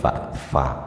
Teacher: Asadisa asyara utawi kang nomor 16 al-khamisa asyara utawi kang nomor 15 iku lil fa'i makhraj fa min batini syafatil sufla, saking bagian dalam bibir yang bawah, bagian dalam bibir bawah, wa atrafit thanayal ulya, dan ujung gigi seri atas, jadi fa ada di bibir bagian bawah.